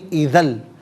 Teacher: دوسرا یہ کہ اذن آپ نے پڑھا، اذن نہیں ایذل، دو زبر کی تنوین کی آواز نہیں ہوگی بلکہ لام کا ساؤنڈ ادا کیا جائے گا